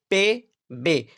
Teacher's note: 2 लबी में इसमें दोनों होठों से हवा को रोका जाता है।